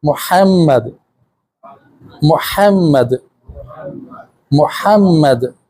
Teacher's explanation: جیسے گلے سے ٹھنڈی سی ہوا نکالتے ہیں، یہ ہا کی آواز نکلے گی